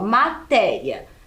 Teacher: matéria também é uma paroxítona porque ela tem a penúltima sílaba tônica mais forte